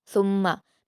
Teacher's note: सुम्मा मीम मुशद्दद है, गुन्ना करेंगे और जल्द पढ़ेंगे।